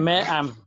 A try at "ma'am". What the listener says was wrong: Ajá, ma'am. Pero más cortito. Ma'am.